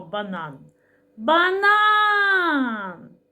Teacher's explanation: наголос падає на другий звук а